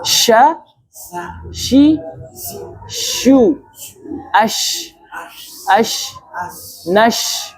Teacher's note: Sya itu di tempat keluarnya di tengah-tengah lidah. Jadi bukan di bibir. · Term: huruf sya